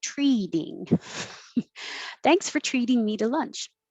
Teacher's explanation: this t in the middle changes to a d so it really does sound like treating thanks for treating me